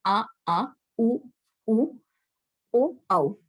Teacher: इसमें आपकी साउंड जो आती है वो गले के आसपास से आती है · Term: पश्चिम भाग